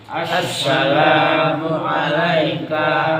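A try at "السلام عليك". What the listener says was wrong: Haknya pendek. Assalamu alayka. Haknya pendek. Satu harokat. Assalamu alayka. Ka.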